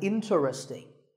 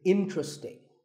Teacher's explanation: there are only three syllables, in, tra, sting, and the stress is on in, so the word is interesting.